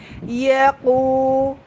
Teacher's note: قاف کو بالکل زبان کے آخری حصے سے ادا کرنا ہے، زبان کی جڑ سے، اور زبان کا آخری حصے کو اوپر کی طرف بھی اٹھانا ہے قاف کو اوپر کرنے کے لیے.